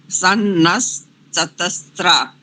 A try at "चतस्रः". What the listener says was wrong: त्रा नहीं करेंगे, वो वहां पर त्रा नहीं है, सा में ही रा है। त्रा नहीं, चतस्र, स्र, चतस्र।